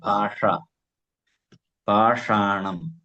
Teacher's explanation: ഷ നാവ് കുറച്ച് മടക്കിയിട്ടാ വെച്ചത്.